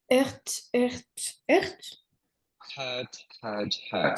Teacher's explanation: c'est un H aspiré et c'est comme si le R n'existait pas. Tu le prononces pas le R.